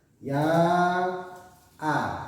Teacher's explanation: Ya a, maka namanya mad jaiz munfasil. Bacanya harus 5 harokat, 5 ketukan atau 2,5 alif. Tidak boleh dibaca 1 alif.